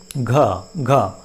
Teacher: सघोष महाप्राण, घ, घ, देखो यहाँ थोड़ी ज़्यादा हवा निकलती है